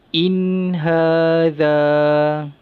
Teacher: nun mati ni kena baca dengan izhar halki, jelas, nyata dan terang, tanpa dengung.